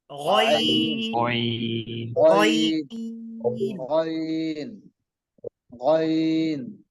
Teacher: আইন আইন আইন আইন আইন আইন আইন হলকের শেষ হইতে একটা হলকের শেষ হইতে উচ্চারিত হবে